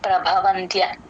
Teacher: పదం మధ్యలో త ముందు సున్నా వచ్చినప్పుడు యూజువల్గా ఎన్ సౌండే వచ్చేస్తుంది ప్రభవంత్య అలా వచ్చేస్తుంది త కింద య వత్తు కూడా క్లియర్ గా వినిపించాలి.